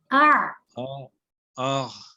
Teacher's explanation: हमजा जो है वो सीने वाली जगह से निकलेगा, आइन दरमियान से